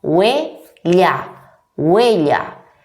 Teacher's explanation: Nos encontramos en la primera sílaba una vocal débil, U, y una vocal fuerte, E, huella. O palabras como pasión, canción. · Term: diptongo